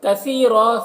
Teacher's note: کثیرا سا کو باریک پڑھیں گے، اور را کو پر پڑھیں گے